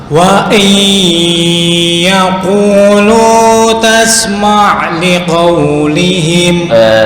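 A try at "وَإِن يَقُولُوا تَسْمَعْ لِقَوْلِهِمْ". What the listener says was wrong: Sebentar, untuk qaf nggak perlu kayak kecekek. Wa iyaqulu, enggak. Biasa. Wa iyaqulu nah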